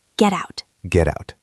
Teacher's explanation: Get out? No, this is American English, so we use the flap T. The T at the end of get is between 2 vowel sounds, the E in get and the in out, so it becomes a soft D sound.